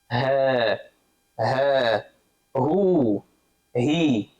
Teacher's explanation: The ha is also the vocal cords, but there's a lot of air that comes with the ha.